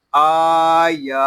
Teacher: حمزہ کھڑا زبر آ، یا کھڑا زبر یا، آیا. یہاں حمزہ اور یا کو ایک الف تک کھینچ کر پڑھیں گے کیونکہ ان کے اوپر کھڑا زبر آ گیا ہے